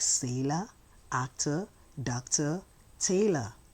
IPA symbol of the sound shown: ə